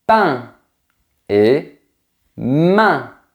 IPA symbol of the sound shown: ɛ̃